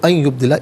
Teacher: نون ساکن کو یا کے ساتھ ملا ہے اور یا کی آواز کو غنّے کے ساتھ ادا کریں گے